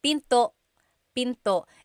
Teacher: Don't forget to stop the sound at the end. That's called a glottal stop.